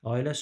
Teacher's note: Ailə sözündə bir dənə a uzun tələffüs olunur.